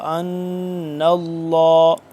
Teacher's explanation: ان اللہ، اس پہ ہم غنہ کریں گے، نون ساکن ہے، نون مشدد ہے، اس پہ ہم غنہ کریں گے اور نون مل رہا ہے لام کے ساتھ